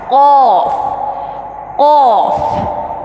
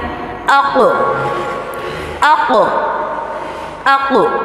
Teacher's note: زبان کی جڑ اور بالمقابل اوپر کا نرم تالو، یہاں سے قاف ادا ہوتا ہے